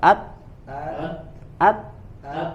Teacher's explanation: huruf ta harusnya dia tidak mengalirkan suara.